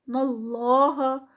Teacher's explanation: اللہ کا نام ہیوی کیونکہ اس سے پہلے زبر آ رہی ہے